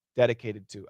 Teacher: that t becomes a flat t and it says dedicated and that ending D and the next word to those two sounds are gonna blend together